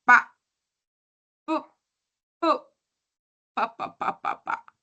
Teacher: Si tú en este momento intentas decir papá, vas a darte cuenta que tus dos labios, superior e inferior se juntan. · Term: bilabiales